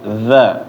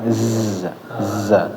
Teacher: lidahnya kalau dza kan dinaikin dza ke gigi atas tapi kalau Zai tidurin aja udah enggak ke mana-mana Iya di belakang gigi ZA [Musik] Um I nanti dilatih lagi